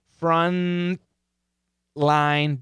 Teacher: I'm going to keep it in the same position. Stop T, front line, dark L. Same tongue position. The tip of the tongue, same position.